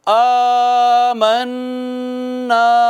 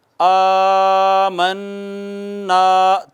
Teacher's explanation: الف المدیہ صغیرہ، پھر غنہ، پھر الف مدہ، تینوں کو ایک الف کے برابر کھینچیں گے